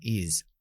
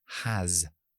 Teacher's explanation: Pero yo utilizo la Z para representarlo. No la Z de castellano, sino la S con voz. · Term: sonido mosca